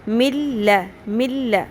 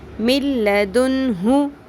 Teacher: نون کی آواز بالکل ختم ہو جائے گی. من لدنہ. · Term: ادغام بغیر غنہ